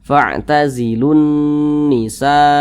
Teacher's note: kalau Syamsiah huruf lamnya dia tidak dibaca langsung masuk ke huruf yang di depannya